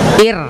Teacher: Tapi kalau sebelumnya hurufnya berharokat kasro, maka ro-nya menjadi dibaca tipis